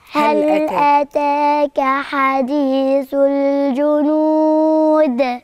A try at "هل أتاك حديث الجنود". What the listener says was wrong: جميل.